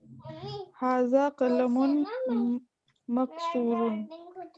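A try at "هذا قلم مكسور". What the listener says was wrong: जी बिल्कुल, हाज़ा कलमुन मकसूरुन,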